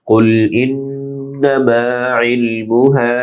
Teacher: কুল বড় কাফ মোটা হবে, ইন নুনে গুন্না, নামা মা এক আলিফ লম্বা হবে, ইল আইন ডিপ হবে, মু টান নেই, হা এক আলিফ লম্বা হবে।